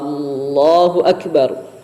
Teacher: seseorang itu ketika mengucapkan takbir memanjangkan hamzahnya lafzul jalalah